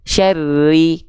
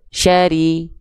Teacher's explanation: kalau dia gak ada tasydid huruf rnya maka dia dibaca tanpa tekanan